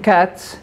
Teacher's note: Cats ends in T, which is a voiceless obstruent. Therefore, it triggers the choice of the S allomorph.